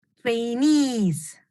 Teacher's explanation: Acuérdense que el estrés es aquí en the second syllable